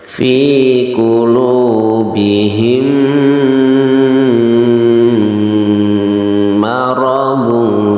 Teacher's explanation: mim sukunnya itu adalah dimasukkan ke dalam mim yang kedua itu dengan cara mendengung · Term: idgham mimi